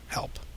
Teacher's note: But if you kind of make a little bit of that rough breath, that kind of like friction right in the vocal cords, and of course we end up with the sound H, as in a word like help.